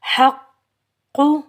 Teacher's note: کاف کے اوپر تشدید ہے، قاف موٹا حرف ہے، کاف کو ہم موٹا پڑھیں گے اور ہا کو ہم باریک پڑھیں گے. ہا بھی، یہ جو ہا ہے یہ ہا حلق کے درمیان سے ادا ہوگا.